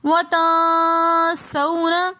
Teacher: پھر آگے وَتَنْسَوْنَ میں واو ساکن ہے اور اس سے پہلے زبر ہے تو یہ ایسی واولین بن جاتی ہیں۔ واولین کو ہم بغیر کھینچے نرمی کے ساتھ جلدی سے پڑھتے ہیں